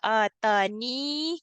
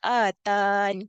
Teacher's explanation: kita kekalkan huruf ya-nya, kita baca atani ketika waqaf, ataupun kita hazafkan huruf ya iaitu kita baca atan ketika waqaf